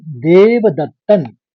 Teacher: देव दत्तन अनुस्वार में न प्रयुक्त हुआ है। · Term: न का ही अनुस्वार